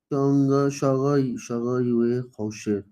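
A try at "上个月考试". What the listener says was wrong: शागा यूए खाओशिर। Falling tone है, यूए के भी ऊपर फॉलिंग टोन है झटके वाली, जिसको हमने झटका लगाना है। शागा यूए खाओशिर।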